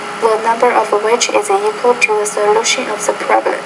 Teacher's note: you're putting pretty much equal stress on almost all the words in the sentence. Now, that's not sentence rhythm.